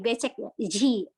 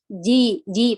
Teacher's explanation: Jim di sini dijaga juga sifat syiddahnya, jaharnya, jangan dihamuskan. Biasanya ji, jadi becek ya, ji, karena dia mengalirkan udara, seharusnya ditahan.